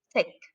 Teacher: ada aspirasinya, ada udara yang keluar dari mulut